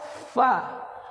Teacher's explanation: menyebut huruf Fa bukan bibir atas dengan bibir bawah tapi gigi atas dengan bibir bawah